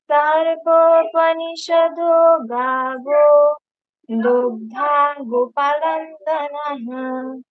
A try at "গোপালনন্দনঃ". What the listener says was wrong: এই শুনুন এখানে, ওয়েট, এবার গোপাল, পাটা দীর্ঘ, আকার আছে, তাড়াতাড়ি বলা যাবে না। গোপাল নন্দনহ, গোপাল নন্দনহ, স্পষ্ট করে বলতে হবে প্রত্যেকটা অক্ষর। না, না, গোপাল এই ওয়ার্ডটা আপনার ভুল হচ্ছে। গোপাল, গোপালন্দন এরকম হয়েছে, লন্দন নয়।